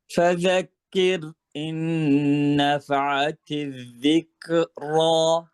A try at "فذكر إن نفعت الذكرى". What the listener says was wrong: এবার কাফ হয়েছে, কিন্তু এই র কিন্তু হয় নাই। এটা মার্ক করেন, এটা আপনার হয় নাই।